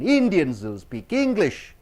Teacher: so Indians and English should be highly stressed